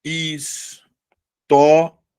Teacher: história, penúltima sílaba, terminada em ditongo crescente. História é uma paroxítona terminada em ditongo crescente.